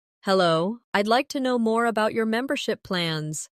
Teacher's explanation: Notice the stress on membership, so it's clear what you're asking about.